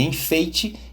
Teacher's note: Na palavra enfeite, a segunda sílaba, fei, tem a vogal E o I é mais fraco, semivogal